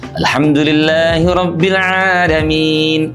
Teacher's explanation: Satu adalah pengucapan huruf hamzah. Pada saat mengucapkan bunyi a tidak jarang ada sahabat kita yang tidak sempurna sehingga terdengarnya seakan-akan menjadi e.